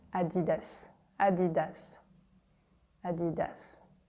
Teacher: the French tone is at the end